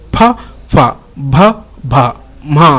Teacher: ತುಟಿಯ ಮುಖಾಂತರ ಉತ್ಪತ್ತಿಯಾಗುವಂತಹ ಅಕ್ಷರಗಳು ಪ ಫ ಭ ಮ ಮ ಅಂತ ಅಂದ್ರೆ ಈ ಅಕ್ಷರಗಳೆಲ್ಲ ಏನಾಗ್ತಿದೆ ತುಟಿಯ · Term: ಓಷ್ಠ್ಯಾಕ್ಷರಗಳು